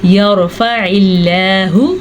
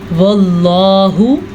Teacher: اللہ کا نام باریک پڑھا جائے گا کیونکہ اللہ کے نام سے پہلے زیر ہے, جبکہ یہ اللہ کا نام پر یعنی کہ موٹا کر کے پڑھا جائے گا کیونکہ اس اللہ کے نام سے پہلے زبر ہے